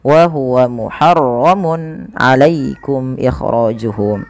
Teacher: pada lafal mun ketemu ain, ini harus dijelaskan suara tanwinnya karena adanya tanwin bertemu dengan huruf ain yang dimana ia termasuk daripada bacaan izhar halqi, maka harus dibaca dengan jelas.